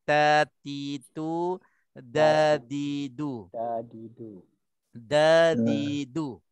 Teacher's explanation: huruf ta dengan dal tempat keluarnya hujung lidah, bersentuhnya gigi depan. Okey, gigi depan atas.